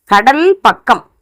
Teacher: மொழி முதல்லையும் இரட்டிச்சு இருக்கும் போதும் கே போல ஒலிக்குது. முதல்ல இருந்தாலும் கே மாதிரி இருக்கு கடல் அப்படிங்கும் போது, இரட்டிச்சு இருக்கு பக்கம்னு இருக்கு அப்படின்னு சொல்லும் போது கே போல ஒலிக்குது. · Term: ககரம்